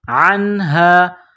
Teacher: عین گلے کے درمیان سے عین کو نکالنا ہے، زور لگا کر عین کو نون کے ساتھ پلس کریں گے.